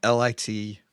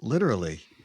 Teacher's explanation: The British have more of the CH sound in it, and the Americans have a stronger T sound.